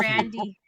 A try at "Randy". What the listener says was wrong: You got to roll your R there on that.